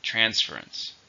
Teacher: how many syllables are in transference three stress on the first